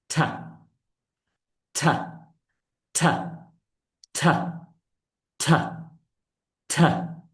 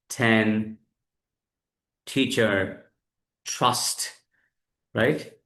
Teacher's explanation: জিহ্বার সামনের অংশটা উপরের দাঁতের গোড়ায় লাগবে, লাইক দিস। ঠা, ঠা, ঠা, ঠা, ঠা, ঠা।